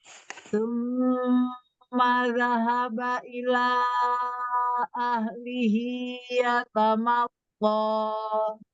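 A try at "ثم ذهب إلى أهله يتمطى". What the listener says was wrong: Masih kurang tebal untuk di huruf to-nya ya, Umi. Tinggal tebal ini. Tebalnya dari ketika sukun ya udah tebal.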